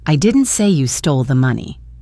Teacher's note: Let's stress the word you. I didn't say you stole the money.